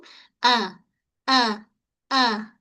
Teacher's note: Hamzah ketatkan bunyi hamzah dari pangkal kerongkong